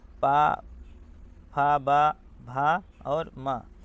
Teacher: ओष्ठ से देखिए, दोनों ओठ से, पा, फा, बा, भा और मा